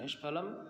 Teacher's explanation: श, क, ठ, प, फ ये हो तो विसर्ग का श हो जाता है, मूर्धन्य श हो जाता है।